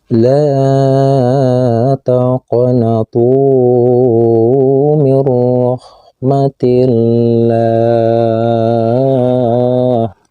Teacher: ini adalah huruf qaf yang berbaris sukun dan harus dipantulkan membacanya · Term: qalqalah sugro